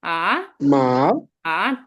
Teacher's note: The fourth tone is the third না tone is না 3 নম্বর টোনটা হচ্ছে কি নিচে নেমে উপরে উঠবে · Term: থার্ড টোন